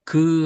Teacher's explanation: 자, 그래서 여기도 보니까 여기 이제 목구멍에서 바람이 나가요. 그다음에 여기 그 하면 코로 나가는 바람이 아니라 입으로 나가죠